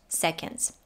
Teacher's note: in the word seconds the o is pronounced as a schwa and the d is slightly touched